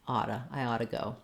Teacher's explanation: otta gets reduced because it's fast it's a structure word a helping verb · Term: reduction